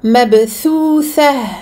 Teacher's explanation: Donc cette lettre, répétée deux fois, qui est la lettre tha, pour laquelle on place le bout de sa langue sous ses incisives supérieures